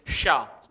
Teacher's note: कौन सा सा, तालव्य शा, कारण कि वो तालु से उच्चरित होता है